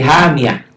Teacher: Hamiyatan dihentikan jadi hamiyah. Tamar butoh, kalau dihentikan bunyinya jadi ha.